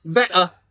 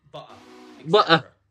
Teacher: glottal stops. They're your best friend if you want to sound like you're a Londoner.